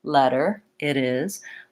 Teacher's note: So I'm not doing a strong, hard D, letter, it is. I'm just moving up into that T position with my tongue, leaving my voice on and gliding. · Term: flap T